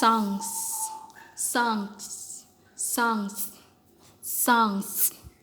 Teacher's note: songs akan mendapat selipan atau insert yang sama, yaitu sama-sama velar